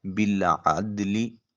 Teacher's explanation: عین کو وسط حلق سے نکالیں، دال ساکن ہے، قلقلہ ہوگا